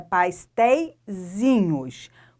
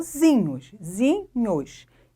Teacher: Porque a sílaba mais forte aqui é o zinhos